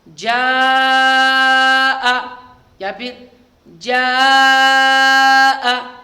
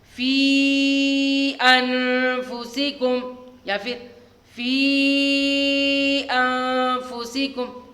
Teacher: مد متصل اور مد منفصل کو 2 یا 2.5 الف، 2 الف بھی کھینچ سکتے ہیں، 2.5 الف بھی کھینچ سکتے ہیں